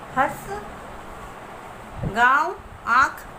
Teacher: इसका उच्चारण नाक और गले से होता है। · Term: अनुनासिक